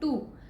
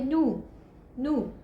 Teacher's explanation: if a child says, हम बच्चे को कहें टू लेकिन वो टू नहीं बोले, उसको कहे नू, नू, that is the child is doing नेजलाइजेशन, कि वो एक ट साउंड को न साउंड से रिप्लेस कर रहा है, दैट इज़ नेजलाइजेशन